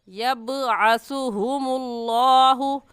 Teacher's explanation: اس آیت میں یوم یبعثو، یب با حروف قلقلہ میں سے ہے، قلقلہ کریں گے، یعنی اس با کو ادا کرتے وقت مخرج میں ہلکی سی جنبش ہوگی اور آواز پلٹ کر آئے گی